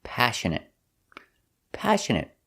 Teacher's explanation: stress is on a first syllable passionate and the next two syllables are pronounced the same uh